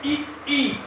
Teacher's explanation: और ई का उच्चारण स्थान आप बोलिए ई ई, जीभ थोड़ा सा तालु को स्पर्श कर देती है, इसलिए इसका उच्चारण स्थान तालु हो जाता है